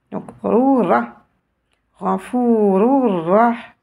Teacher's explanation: Je vais insister sur le Ra. Je vais éviter de prononcer L